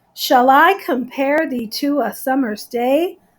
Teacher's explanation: an unstressed syllable short and then a harder syllable an accented syllable